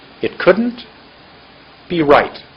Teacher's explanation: Right was much longer than be